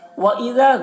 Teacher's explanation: ذال کو باریک پڑھنا ہے اور یہاں پر الف مدہ ہے